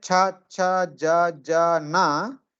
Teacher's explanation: with the middle of the tongue when you say chaa na the tip of the tongue touches the center of the pallet upper pallet